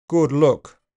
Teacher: In RP, the sound is always uh with some rounding. · And rounding is more likely. In RP, the sound is always with some rounding. Good look. And in old-fashioned RP, even more back and more rounded is possible. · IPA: [ʊ], /ʊ/